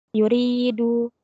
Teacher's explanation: hukumnya mad thabi'i dibaca panjang dua harakat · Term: Mad Thobi'i